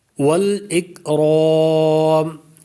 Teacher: ذا الجلال والاکرام، یہ نہیں کریں گے، کلکلا نہیں کریں گے، یہ کاف باریک ہے، اس پر کلکلا نہیں ہوگا ، اور را کو پر کریں گے، موٹا پڑھیں گے را